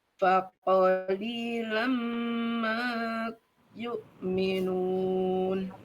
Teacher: Faqoli, li-nya yang panjang.